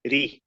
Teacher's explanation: as we said if it's a fat house it's a heavier if it's a casra Kasra is the broken form it comes out really light